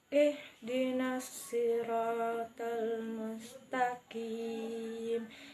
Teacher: huruf syad yang makhrajnya di ujung lidah bertemu dengan pangkal gigi seri bagian bawah